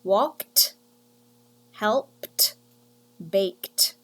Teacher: we write the letters e d but we say t at the end